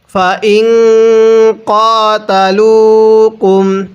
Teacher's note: নাকের বাসি দ্বারা গুন্নাহ করব, কারণ নুন সাকিনের পরে কফটি হলো ইকফার হরফ।